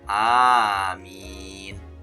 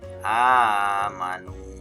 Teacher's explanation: Nah, itu ya salah satu contoh mad wajib muttasil. Ada huruf mad ketemu dengan huruf hamzah. Biasanya dibaca 5 ketukan.